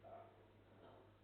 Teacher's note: Do you notice that there's a slight delay in the vibration?